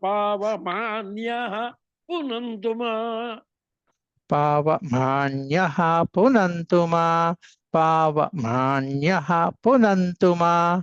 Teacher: అది అన్యః అనేటువంటిది స్వరితం చెప్పాలి